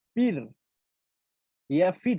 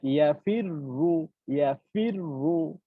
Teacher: তো আমরা কি জানি যে জবর অথবা পেশ হলে উম মোটা হবে। তো যখন আমরা দ্বিতীয়বার যখন বলতেছি রো, তখন কিন্তু আমাদেরকে মোটা করে পড়তে হবে